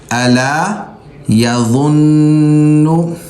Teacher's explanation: نون پر تشدید بھی نون پر غنہ بھی کریں گے، ناک میں آواز پیدا کریں گے · ذال کی طرح زبان کی نوک اگلے دانتوں کے درمیان دینی ہے اور اس کو موٹا نکالنا ہے